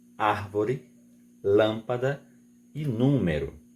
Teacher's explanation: A sílaba tônica é a antepenúltima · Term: proparoxítonas